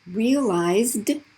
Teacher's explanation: that's just the d sound because it ends in a voice z